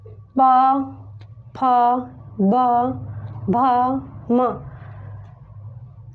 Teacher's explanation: इसका उच्चारण करते समय हमारे ओठों की क्रिया हो रही है, इसलिए इसका उच्चारण स्थान ओष्ठ होता है।